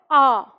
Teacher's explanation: अब ये कंठ से बोला जाएगा आ, और इसे हम खींच के बोलेंगे।